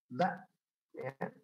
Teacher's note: A, I, U, ba, putus. Jangan ba, jangan dialirkan tapi putus. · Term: Hamzah